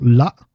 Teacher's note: So la, with the glottal stop, is till, until.